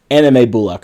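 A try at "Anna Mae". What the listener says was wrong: Now, you keep saying, or is it like Anna May? You're putting it together, and it almost sounds like you're saying anime. like she's she's a Japanese cartoon.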